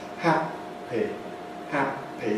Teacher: If we take a P sound like in happy, the lips come together, happy. Then they stay together, that's called the hold. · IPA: [ˈhæpi]